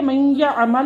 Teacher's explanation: یا نے نون کو اپنے اندر مدغم کر لیا۔ اب نون لکھا تو جائے گا مگر پڑھنے میں نہیں آئے گا۔